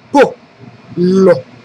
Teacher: la voce si appoggia un secondo sulla vocale, ma in realtà la vocale è corta e dà forza diciamo alla consonante